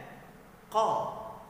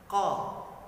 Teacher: Sekali lagi qa, dari renggungan kita di sini ya, paling dekat dengan renggungan paling atas, pangkal lidah. Nah, pangkal lidah kita ini bersentuhan dengan langit-langit yang paling belakang. Nah, huruf qaf itu sendiri merupakan huruf isti'la, huruf yang dimana diucapkan itu pangkal lidah kita terangkat dan menyentuh langit-langit.